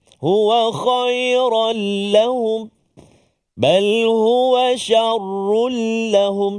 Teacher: masukkan bunyi tanwin tu ke dalam huruf lam. Tanpa dengung. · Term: idgham bila gunnah